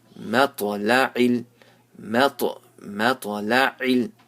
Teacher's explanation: It's not moto, but it's مَطْ. And ta, since it has a sukoon, you have to make qalqala, you have to bounce it.